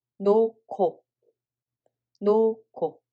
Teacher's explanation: [ㄱ] sound is aspirated by hieut